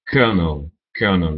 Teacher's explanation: le L est devenu un r en prononciation